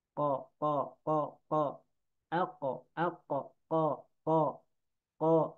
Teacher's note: Qaf keluarnya dari pangkal lidah dengan langit-langit.